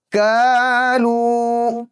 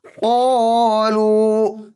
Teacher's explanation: کاف کی آواز کالو، آسانی کے ساتھ ادا ہوتا ہے. قوف خوب زوردار انداز سے موٹی آواز پیدا کریں گے · باریک کاف اور موٹے قوف کی آواز میں فرق